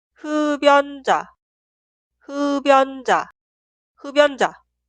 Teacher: En la pronunciación, la consonante final 비읍 se traslada al lugar de i응 en la sílaba posterior. i응, consonante inicial, es muda.